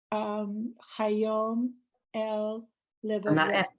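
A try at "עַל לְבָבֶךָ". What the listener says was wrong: Not el, al.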